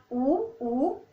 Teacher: ऊ बोलते हो आपके होठ आगे की तरफ आ रहे हैं · जब आपने ये बोले तो आपके जो दोनों होठ है वो एक दूसरे को टच कर रहे हैं बेटे। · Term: ओष्ठ